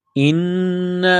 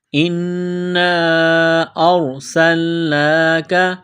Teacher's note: نون مشدد ہے غنہ کریں گے آواز ناک میں چھپائیں گے